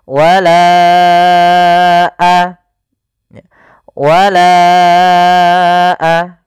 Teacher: Panjangkan lanya dulu empat harakat baru lepas. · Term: mad jaiz munfasil